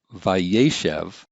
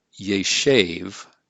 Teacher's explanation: Normally we would see yeshev like this with two seres. But since the accent's been shifted to the right, it's vayeshev, then this final syllable loses its accent, and so the vowel shortens